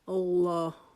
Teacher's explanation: جب آپ اللہ پڑھیں گے تو آپ نے اللہ کے نام کو موٹا کر دینا ہے۔ موٹا آپ نے ہونٹ گول کر کے نہیں کرنا۔